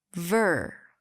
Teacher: Longer, louder, higher in pitch. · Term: primary stress